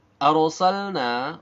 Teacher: ra dibaca tafkhim karena sukun sebelumnya fathah